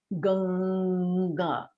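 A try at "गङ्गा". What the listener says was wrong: You're still saying no. You're saying no. We don't want a no sound. When I say ganga.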